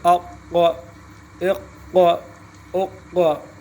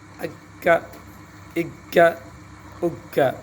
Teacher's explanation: اقا قلقلہ بھی ہے, موٹا بھی ہے